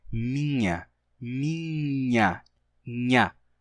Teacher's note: E, por causa disso, esse in de minha terminou gerando um toque. As pessoas começaram a dar um toquezinho com a língua no palato e dizer minha, minha, nha, né? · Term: toque consonântico